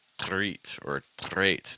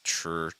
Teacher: when you see a T and an R that link together, it makes almost like a CH sound, like a ch, with a little R attached to it